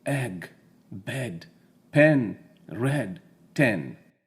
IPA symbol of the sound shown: ɛ